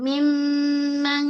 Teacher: Mim suara naik ke hidung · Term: ghunah akmal